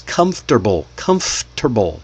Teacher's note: We write 4 syllables on paper. Comfortable. But when you see it, we say only the 3 syllables.